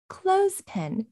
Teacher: we're stressing the first element and in order to stress it our intonation rises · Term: set phrase intonation